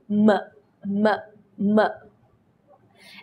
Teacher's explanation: you bring your lips together and pronounce the sound from the vocal cords